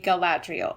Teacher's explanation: I think I've heard most people put the accent on the second syllable